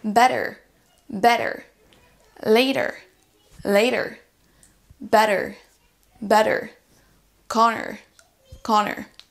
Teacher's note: Si vous avez plutôt un accent américain, là on va entendre un R qu'on appelle un R rhotique, mais qui n'est pas du tout le même qu'en français.